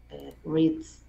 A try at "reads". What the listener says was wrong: No, pero me estás diciendo con sonido de S. Es sonido de la D. D. La D vibra, mira. Si vibra, es con Z.